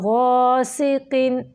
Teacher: قاف کے نیچے 2 زیریں آ گئی ہیں، اس کی موٹائی کم ہو گئی ہے